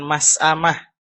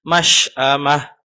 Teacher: hati-hati huruf shin, bukan mas'amah, tapi masy'amah